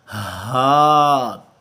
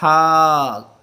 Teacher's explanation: یہ جو ہا ہے گول ہا ہے، یہ جو ہمارا انر تھروٹ ہے، گلے کا تیسرا حصہ جو ہمارا سینے کی طرف ہے، یہ قدرے بھاری آواز جو ہے ہا کی وہاں سے پروڈیوس ہوگی، قدرے بھاری آواز، اس پر زور بھی زیادہ لگے گا. ہا، ہا، پہلا جو ہا ہے اس کی آواز قدرے نرم سافٹ، جب اس کے ساتھ گول ہا ہے، یہ سینے کی طرف جو گلے کا حصہ ہے تیسرا حصہ وہاں سے اس کا مخرج ہے، اور یہ قدرے بھاری آواز